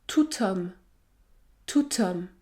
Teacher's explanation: lorsque le déterminant se termine par la consonne T, dans ce cas, le son produit est T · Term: liaison